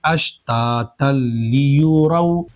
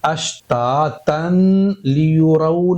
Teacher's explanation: اس تنوین کے اندر ایک نون ساکن چھپا ہوتا ہے اس طرح کا، اس نون ساکن کو اور اس والے لام کو، ان دونوں کو آپس میں ملائیں گے اور مکس کریں گے، جیسے دودھ اور پانی کو مکس کرتے ہیں، ملاتے ہیں۔ ملانے کے بعد میں یہ 2 حرف جو تھے نون ساکن اور یہ لام، یہ دونوں مل کر ایک حرف بنے گا اور وہ بنے گا لام۔ یعنی یہ جو نون ساکن چھپا ہے تنوین کے اندر، یہ فل سائلنٹ ہو جائے گا، ذرا سی بھی اس کی آواز نہیں آئے گی، صرف لام پڑھا جائے گا۔ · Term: ادغام بلا غنہ